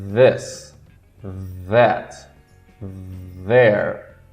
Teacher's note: Então, língua relaxada, forma tipo uma concha. E vibra.